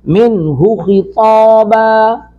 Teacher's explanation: نون ساکن کے بعد ہا اظہار کریں گے